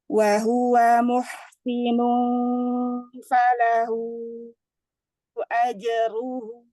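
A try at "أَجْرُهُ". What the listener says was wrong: Hunya agak kegedean kepanjangan kadar harakatnya aja ruhunya aja ruhunya dua harakat aja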